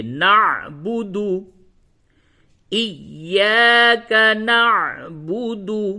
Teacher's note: نعبد عین حلق سے صحیح سے ادا کیجئے